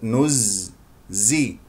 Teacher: والزاي يجري فيها الصوت لا يجري فيها النفس